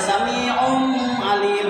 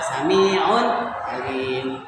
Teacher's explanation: tidak boleh ada tanwin domahnya dimasukkan ke ain. Sami'u alim itu tidak boleh, karena salah.